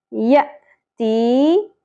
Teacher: یا ساکن سے پہلے زیر ایک الف کے برابر کھینچنا ہے